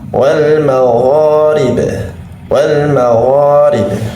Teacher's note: huruf ghain itu bukan huruf yang memiliki sifat hams, atau ketika pengucapannya yakni tidak menyertakan mengalirkan nafas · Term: sifat jahru